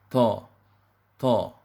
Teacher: dalam mengucapkan huruf to, usahakan dia tidak ada angin ataupun hams